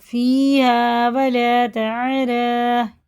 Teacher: یا چھوڑ دیں گے، یا بالکل پڑھنے میں نہیں آئے گی، جہاں بھی آیت پہ آ رہی ہے نا اس طرح کی، یہ نہیں پڑھ جائے گی۔